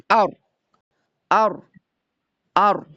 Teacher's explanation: Baik, selanjutnya masih di ujung lidah itu ada huruf ro ya. Huruf ro itu di ujung lidah lebih dalam ke langit-langit